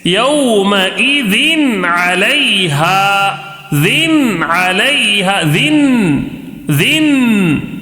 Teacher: نون کی آواز کو ظاہر کر کے بغیر غنہ کے جلدی پڑھیں گے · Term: اظہار